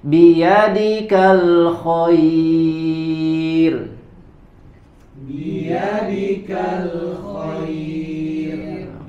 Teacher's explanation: Ketika ada huruf ro sukun sebelumnya ada ya layyinah atau ya sukun maka dibaca dengan tipis.